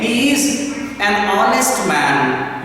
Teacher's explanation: we don't produce the sound of H here